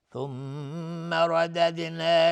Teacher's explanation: ثم رددنا، میم مشدد دو حرکت غنه میدیم. ردد را حکمش استعلا چون فتحه داره.